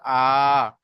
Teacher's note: অর্থাৎ খাড়া জাবার আলিফ মাদ্দার সমতুল্য, তার মানে আলিফ মাদ্দাকে যেমন এক আলিফ টান দিয়ে পড়তে হয়, ঠিক ততরূপ খাড়া জাবারকেও আমাদেরকে এক আলিফ পরিমাণ টান দিয়ে পড়তে হবে